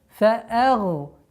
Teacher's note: Обратите внимание, гай твердая, нун мягкая. Фа'агна. При остановке удлинение у нас в размере 2 огласовок.